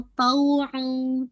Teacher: आइन की आवाज निकालते हुए फतह को वाज़े करते हुए वाव के साथ मर्ज करना है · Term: इदगाम नाक़िस विद गन्ना